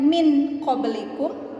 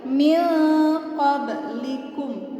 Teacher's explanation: Mil maksudnya didengung itu ditahan ya teman-teman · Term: ikhfa